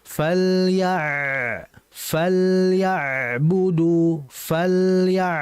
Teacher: ain pada kondisi sakinah, pada kondisi mati dialirkan tapi dengan aliran yang sedang. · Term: ain mati